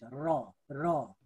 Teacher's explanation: र उच्चारण गर्नुभयो भने यो जिब्रो चाहिँ थर्किन्छ, र। अनि त्यस्तै अर्धस्वर भनेको आरम्भ चाहिँ स्वर झैँ, हेर्नुहोस् है, आरम्भ स्वर जस्तै र अन्त्य चाहिँ व्यञ्जन जस्तै भई उच्चारण हुने वर्ण चाहिँ के हो अर्धस्वर हो। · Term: कम्पित वर्ण